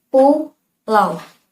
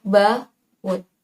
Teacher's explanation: Keduanya sama-sama dengan menggunakan huruf vokal gabungan huruf vokal au. Tetapi pada diftong pulau, au diucapkan dalam satu suku kata seperti pulau. Sedangkan pada deretan vokal pada kata baut, gabungan huruf vokal au dibaca dipisah seperti baut